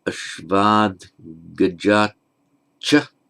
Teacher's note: the final T of the ablative, ashvat, becomes voiced with the following voiced consonant